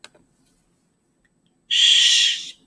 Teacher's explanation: the SH you can kind of keep going you don't really just stop it it's like an it's an open sound you can just go · it's an open sound you can just go Shh for as long as you want until you have enough breath right or until you run out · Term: sh sound